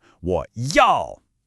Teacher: that's the dipping tone, followed by a sharp falling fourth tone, 我要. It has to sound decisive.